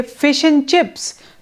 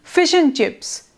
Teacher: when we say fish and chips, so it becomes fish and chips in continuation, in fluency, and this and is omitted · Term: elision